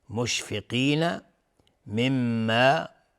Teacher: میم مشدد دو حرکت غنه میدیم